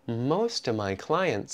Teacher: Most of my clients, we take out the V in of again